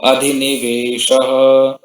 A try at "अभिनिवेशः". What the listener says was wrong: अधि नहीं है, अभी